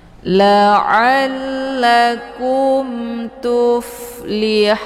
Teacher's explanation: Pertama sukun asli yaitu huruf mad, dan yang kedua sukunnya dengan sebab diwaqaf. Maka mad arid li sukun ini atau hau ini dibaca panjang, boleh 2, 4 sampai 6 harokat.